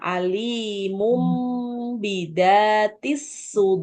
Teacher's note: jadi dengung em-nya panjang